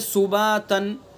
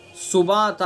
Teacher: वफ़ कर देंगे तो तनवीन ख़त्म हो जाएगी